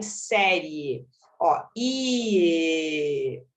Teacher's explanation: o i é fraquinho, o e é forte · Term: ditongo crescente